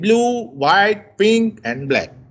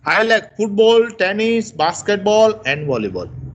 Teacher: when the list goes up, our voice rises, but when we end with the last word of the list, we fall.